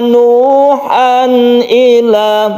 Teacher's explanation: tanwin apabila bertemu Hamzah ini disebut izhar halqi halqi artinya tenggorokan bahwa makhraj dari hamzat tersebut itu berasal dari tenggorokan